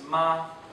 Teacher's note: the word for mother is ma, pronounced with a high, flat pitch, like a musical note drawn out